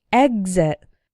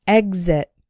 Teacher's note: The X is followed by a vowel sound, but the first syllable is the strong one, exit. But we still pronounce the X like gz, exit.